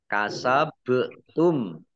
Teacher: bacaan Qalqalah dibaca memantul ditampakkan pantulannya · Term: bacaan kolkolah